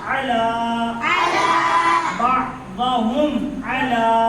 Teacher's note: لام پر کھڑا زبر ہے. الف مدہ کی طرح تھوڑا کھینچ کر پڑھیں گے. لام کھڑا زبر لا.